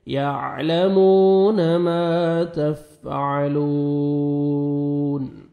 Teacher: یعلمون ما تا کو باریک پڑھیں گے, اور فا کو اچھی طرح تفع, عین پڑھیں گے, واو مدہ, لام کو 1 سیکنڈ کھینچیں گے, لاسٹ میں نون ساکن ہو جائے گا جب سٹاپ کریں گے.